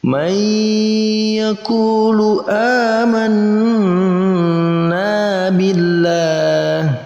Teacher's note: nun berharokat tasdid kita dengungkan, maka itu masuk dalam kategori gunnah musyaddadah. · nun yang berharokat tasdid, maka kita panjangkan 2 harokat dengan didengungkan